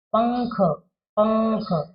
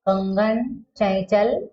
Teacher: जब अनुस्वार के लगे शब्द हम बोलते हैं तो आवाज कहाँ से निकलती है? नाक से। पंख, पंख नाक से आई।